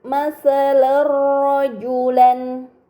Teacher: Kemudian pada kata masalar rajulan terdapat harokat fathah tain yang bertemu dengan huruf ro, ini dinamakan idgham bila gunnah, maka fathah tain dibaca secara melebur tanpa gunnah